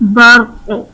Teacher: ہمارے پاس حرف قلقلہ ہے، وقف کی صورت میں ساکن ہو جائے گا، تو جب حرف قلقلہ ساکن ہو تو ان میں قلقلہ خوب ظاہر کرتے ہیں